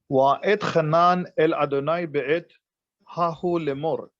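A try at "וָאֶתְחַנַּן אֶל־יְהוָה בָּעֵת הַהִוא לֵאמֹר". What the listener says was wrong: That was beautiful, but the vowels tricked you right here. The vowels tricked you. So the letters are hahu, which is what you correctly said, but the vowels are the vowels for hahi.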